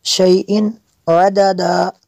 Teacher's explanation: تنوین کے بعد عین ہے، حروف حلقیہ میں سے، تو یہاں پہ اظہار ہوگا، یہاں پہ غنہ نہیں کر سکتے۔